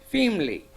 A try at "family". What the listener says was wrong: Family, that red word should you have to stress more.